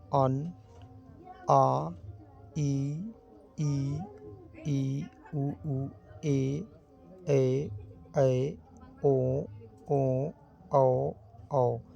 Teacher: नाक से मुख के तो साथ आवाज निकल ही रहा है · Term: अनुनासिक